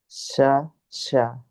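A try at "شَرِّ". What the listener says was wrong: Nah, masih belum beda. Shin di tengah lidah, sin di ujung. Sya, sa. Wa min sya. Wa min syarrin. Jadi bukan syarrin.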